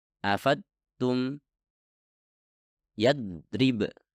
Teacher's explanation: anda telah menekan menggunakan tepi depan lidah yang artinya Anda menghasilkan huruf Dal bukan huruf Dod